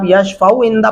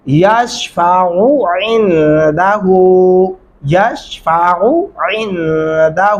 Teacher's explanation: دونوں عین الگ الگ پڑھتے ہوئے محسوس ہونے چاہیے کہ آپ نے دو عین الگ الگ وجود میں پڑھے ہیں۔